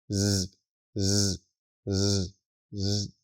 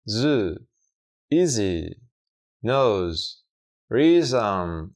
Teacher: Su pronunciación es básicamente el mismo sonido que el del fonema Sund, pero en este caso el sonido se debe devolver vibrante, es decir, debemos generar vibración en las cuerdas vocales. Del sonido s sound s pasamos a sound añadiendo vibración sonora tal que así.